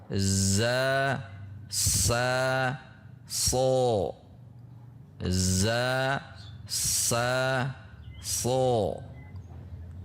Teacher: Huruf zai memiliki makhraj sama dengan huruf sin dan sod.